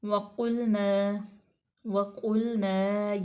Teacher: वाव जो है वो हरूफ़े मतलब शफ़वी है और वाव मफ़तूह है। क़ाफ को पुर पढ़ा जाएगा।